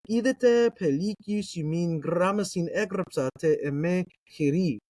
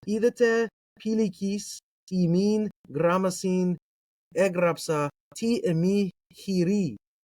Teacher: If you were to read this, right, remember that in modern Greek, etas are pronounced as iotas. Omicron iota vowel pair is pronounced as iota. Upsilon is pronounced as iota. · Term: ioticized